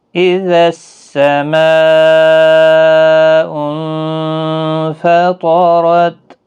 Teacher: نون ساکن کے بعد فا اخفاء حقیقی ہوگا، گنہ کے ساتھ پڑھیں گے۔ · یہاں پر مد متصل ہے، 4 الف کی مقدار کے برابر کھینچ کر پڑھیں گے۔